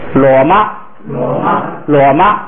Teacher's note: 那个马声调变成了高平调